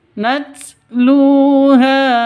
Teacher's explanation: Nacluha tnya huruf haas harus ada desisnya, harus ada ee nafas yang keluar ya. Kalau sukun natluha seperti itu.